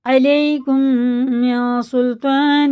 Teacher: اس نون کو ناک میں لے جا کر 1 الف کے برابر کھینچ کے پڑھیں گے، غنہ اور اخفا کر کے